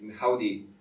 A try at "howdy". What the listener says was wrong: We say it louder than that.